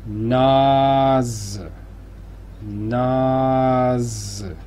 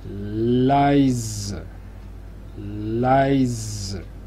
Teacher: a principio de sílaba la S simple se hace siempre sonora, o sea, típico sonido de zumbido de avispa o de abeja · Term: S sonora